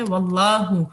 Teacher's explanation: لام جلالہ آپ کا فل ماؤتھ ہوگا